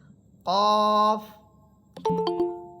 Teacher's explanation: কফ এটা জিহ্বার গোড়া উপরে তালুর সাথে লাগবে।